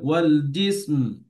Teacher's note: মিমটা ধরবেন কিন্তু, যেন জিস না শোনা যায়